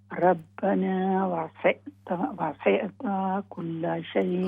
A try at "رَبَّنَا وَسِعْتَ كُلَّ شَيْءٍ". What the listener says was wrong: ہاں جی تھوڑا سا اس کو نرم رکھے نا. ہاں جی یہاں پر نون کی آواز نہیں آئے گی.